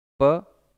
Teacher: प बोलेंगे, दोनों होठ आपस में जुड़ेंगे। फ, ब, भ, म दोनों लिप्स का सहयोग होता है, इसीलिए इसको हम ओष्ठ ध्वनि कहते हैं